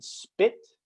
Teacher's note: the p you say in spit is very unaspirated there's not a lot of air coming out at all